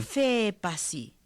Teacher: the definitive accent goes on the final vowel of the noun phrase. So no matter how long it is, whether it's like the horse in the house, the like hosi api, the definitive accent still comes at the end of api, even though we're talking about the horse in the house.